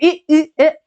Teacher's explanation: ई ए, ये जीभ के अग्र हिस्से से बोले जा रहे हैं